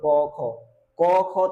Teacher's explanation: অঘোষ উচ্চারণ করার সময় কি হবে? আমাদের কন্ঠনালী একটু কম কাপবে